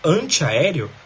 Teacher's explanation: Esse an de anti é tônico, ele é subtônico. Ele é mais tônico que as outras e menos tônico que a sílaba tônica mesmo, que é o é, né?